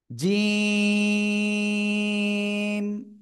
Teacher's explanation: জিমটা একটু শক্ত করে জিহ্বার মধ্যখান উপরে তালুর সাথে লাগিয়ে উচ্চারণ করব।